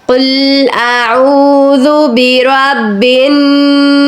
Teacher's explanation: ہم نے سین کو ساکن کر کے ناس کہہ کر خاموشی اختیار کر لی۔